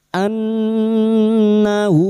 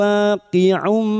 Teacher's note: ha damir yang berharakat panjang dan tidak bertemu hamzah maila khosiro dua harakat kita panjangkan